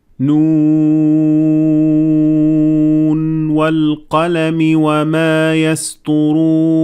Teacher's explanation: you will not merge between Noon at the end of the word Noon and the waw that comes afterwards. So there is no idgham.